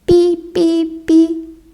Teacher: читати буква П частина перша буква Т позначає приголосний звук п коли ми його вимовляємо та наші губи стискаються а через них проривається струмінь повітря